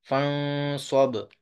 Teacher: یہ با ہے کتب جدن میں سے، اور با ساکن بھی ہے، تو اس لیے یہاں پہ کلکلا کریں گے